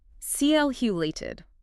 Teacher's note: And the action you took at the very beginning, calculated. Here the stress is on the first syllable.